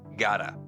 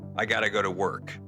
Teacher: And it's not even pronounced with a T, it's more like a D. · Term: reduced forms